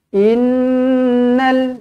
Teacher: dengungkan dua harakat, nun di sini wajibul gunnah.